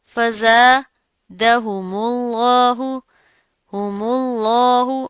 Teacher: جلالہ سے پہلے پیش آ رہی ہے میم کے اوپر، تو اس کو ہم موٹا کر کے پڑھیں گے، اس کو باریک نہیں کرنا۔